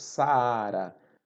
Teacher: um encontro vocálico em que duas vogais pronunciadas em dois impulsos distintos formando sílabas diferentes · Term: hiato